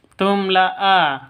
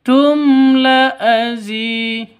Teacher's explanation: mim mati bertemu dengan lam ini jelas, terang, tidak boleh dengung, tidak boleh panjang. Tum la azi, itu salah.